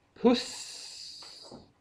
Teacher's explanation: då är det ju ett långt s därför att uet är kort